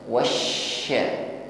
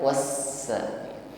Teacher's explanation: huruf syin yang bertasdid semakin kuat sifat tafasinya menyebar angin di dalam mulut kita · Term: sifat tafasyinya